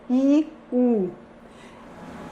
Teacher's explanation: Observem que a língua se eleva na produção desses 2 segmentos.